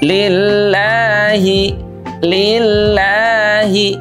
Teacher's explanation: Lillahi sahabat Al-Qur'an itu panjangnya dua harakat saja.